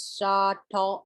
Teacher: you can almost not hear that little l i'm making at the end but you can see my mouth making it so tall you